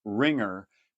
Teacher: the n and the g are kind of happening simultaneously which means it's actually a new symbol a new sound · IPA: /ŋ/